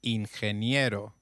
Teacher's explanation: g when followed by e/i takes up the sound of a stressed h